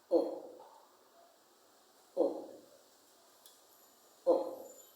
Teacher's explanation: your mouth is open and the lips are rounded. The tongue is low inside the mouth, but the back of it is raised. The tip of the tongue is not near the lower front teeth. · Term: short sound